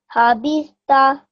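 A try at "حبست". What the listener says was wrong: Just with the ta is a round letter, so it should be pronounced a bit thicker.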